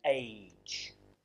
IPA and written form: eɪdʒ (age)